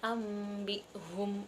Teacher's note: Kemudian ada huruf iqlab yang berarti membalik. Nah, yaitu apabila nun mati atau tanwin ini bertemu dengan huruf ba, nah maka dibaca iqlab atau menjadi mim. Contohnya itu seperti ambihum, itu nun mati bertemu ba.